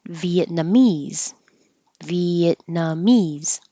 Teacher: and Vietnamese Vietnamese you you won't hear the T Viet nah so the tongue goes to the T position and then the end you'll never hear the T